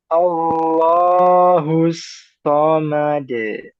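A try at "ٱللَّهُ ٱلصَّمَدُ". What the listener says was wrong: A-nya jangan tebal juga. A, jangan Allah, Allah, A.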